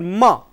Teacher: lower lip and upper lip, but when they touch, the air passes out through the nose. So, that is a nasal sound.